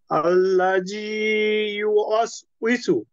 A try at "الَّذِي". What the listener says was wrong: জি, সুন্দর হয়েছে, এটা কিন্তু আল্লাহ জি আপনি শক্ত করেছেন, এটা নরম হবে। আল্লাহ জি, জি, জালটা নরম না।